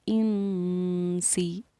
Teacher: اس نون ساکن کے بعد حروف اقوا میں سے سین آ رہا ہے تو ہم نے اس پر اخفا کیا، نون ساکن پر اس کو پڑھا انسی۔